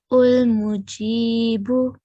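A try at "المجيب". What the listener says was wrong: یہ الف پر آپ نے دمہ لگایا کس طرح, کس رول کے تحت, دیکھیں چیک کریں. ابھی بتایا بھی تھا.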